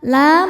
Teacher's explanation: La mad tabi'i dhahiri sebab ada alif sebelumnya baris fathah. Dibacanya panjang 2 harokat.